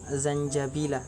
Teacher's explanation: Kemudian pada ayat ke-17 terdapat hukum bacaan ikhfa hakiki, itu pada lafaz zanjabila, apabila nun sukun bertemu dengan huruf jim, maka cara membacanya samar-samar tanpa dengung